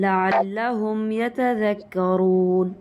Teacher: ہم میم کو ناک میں نہیں لے جائیں گے، اخفا نہیں کریں گے، اس پہ غنہ بھی نہیں ہوگا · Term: اظہار شفوی